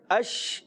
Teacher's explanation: شین کے اندر تفشی پائی جاتی ہے, منہ میں آواز پھیلتی ہے, آواز آتی ہے اش.